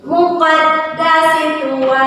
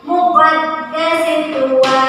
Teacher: Sinya tidak boleh dipanjangkan